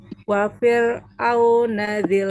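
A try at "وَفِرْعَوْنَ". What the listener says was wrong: Wafi. Ininya rahangnya dia ke bawah. Wafir. Bukan au tapi ain. Wa fir'auna dzil autad. Nanti dilatih ya huruf ainnya ya.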